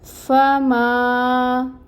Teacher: فا میں ہمس ہوتی ہے، اس ہمس کو واضح کریں گے اور فتح کی حرکت کو 1 کاؤنٹ ادا کریں گے۔ · ماں کو 2 حرکت کے برابر لمبا کھینچیں گے۔ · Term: الف مد